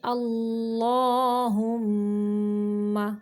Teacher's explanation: اللہ کا لام موٹا پڑھیں گے کیونکہ اس کے پچھلے حرف کے اوپر زبر ہے، اس لیے ہاں کو اقصی حلق یعنی حلق کا وہ حصہ جو سینے کی جانب ہے وہاں سے نکالیں گے۔ · میم مشدد کا غنہ ناک کے بانسر سے نکالیں گے